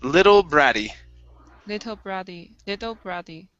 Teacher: let's switch these double T's to flap T sounds